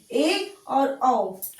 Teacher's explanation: half open, जिसमें आपका मुंह हाफ ओपन होता है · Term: अर्ध विवृत